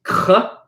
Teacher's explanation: you're pronouncing k using the back of your tongue.